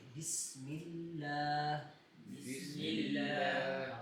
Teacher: بسم اللہ میں لفظ اللہ کو ہم نے موٹا نہیں پڑھنا لام. تو ہم اس کو بسم اللہ نہیں پڑھیں گے, بسم اللہ بسم اللہ.